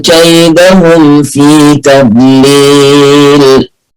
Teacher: يجعل كيدهم كلها حروف مرققة، برضو عندي الميم ساكنة وبعدها حرف الفاء إظهار